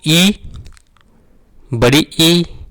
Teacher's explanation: हमारी जीभ आगे की ओर जा रही है तो इसमें अग्र स्वर में हमारा जाएगा छोटी ई, बड़ी ई